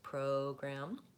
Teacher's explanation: In addition, program, again, that vowel O, you're going to want to hold that longer. That's where the stress is